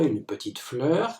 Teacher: deux mots petite et fleur peuvent porter l'accent sur le i de petite et sur le e de fleur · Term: accent de groupe